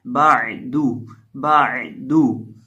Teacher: اب یہ جو عین ہے یہ ساکن ہے، عین کو ہم ادا کریں گے حلق کے بیچ سے